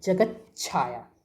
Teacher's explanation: यदि ये सारी चा या छा हो तो ता जो है आधा ता, इसका क्या बन जाता है? आधा चा बन जाता है।